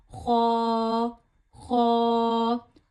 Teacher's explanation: इसे मुंह भर के निकालना है और गले के पहले हिस्से से अदा करना है।